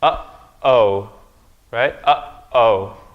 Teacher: There's a break there. There's a break there in the vowel sound. And that's the hamza.